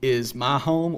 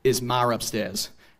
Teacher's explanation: sometimes they'll just add an R onto words where it wouldn't normally be